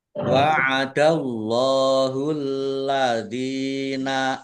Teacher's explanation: Allahnya Dibaca tebal karena harakat di depannya fathah.